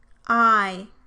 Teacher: the tongue moves from the low central position towards a high front position as shown by the arrow.